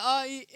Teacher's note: अ का कंठ और ई का तालु, इसीलिए अ ई ए हुआ, क्योंकि ए का उच्चारण स्थान कंठ तालु